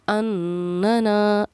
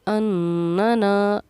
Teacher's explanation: نون پر کیونکہ تشدید تھی تو ہم نے یہاں غنہ کیا، زا پر بھی تشدید ہے لیکن ہم نے اس پر غنہ نہیں کیا، کیونکہ ہمارے قاعدے کے مطابق نون یا میم پر تشدید ہو تو غنہ ہوتا ہے، اسی لیے ہم نے اننا اس کو پڑھا ہے اننا، ناک میں تھوڑی دیر آواز کو چھپانا غنہ کہلاتا ہے۔